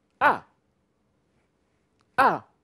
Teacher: And the last, it's a falling tone.